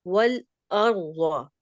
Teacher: را ساکن سے پہلے فتحہ ہے، ہم اس را کو بھی پر ادا کریں گے